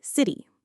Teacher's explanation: When the T comes between two vowel sounds, it often transforms. It becomes something we call a flap T. And it sounds much more like a soft quick D.